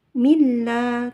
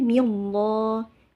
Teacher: La dibaca panjang 2 harokat dan dibaca tipis ya. Disebabkan sebelumnya berharokat kasrah. Jadi milla, tidak boleh millah, milla gitu ya.